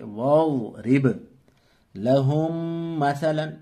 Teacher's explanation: میم ساکن کے بعد میم آیا اس لیے یہاں ادغام شفوی ہوگا، غنہ بھی ساتھ میں ہوگا، یعنی ناک سے پڑھیں گے